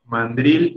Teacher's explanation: Pero en realidad, mandril tiene la sílaba fuerte en la última. Drill se debe pronunciar un poco más fuerte, porque no lleva tilde, un poco más fuerte que la sílaba man.